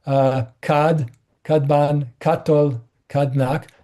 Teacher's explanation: What's happening is before a B, they both become D. Before a T, they both become T, right? It's voicing assimilation.